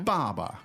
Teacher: the Baba to remember is the fourth tone it's stronger